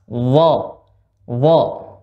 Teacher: Huruf dha ujung lidah bertemu dengan ujung gigi seri bagian atas.